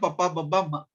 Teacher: వీటిని ఉచ్చరించినప్పుడు స్థానకరణాల యొక్క స్పర్శ సంపూర్ణంగా ఉంటుంది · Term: స్పర్శాక్షరాలు